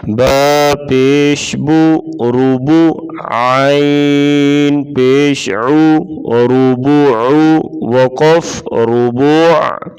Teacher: را کے اوپر پیش ہوگی، را کو پر پڑھیں گے یعنی موٹا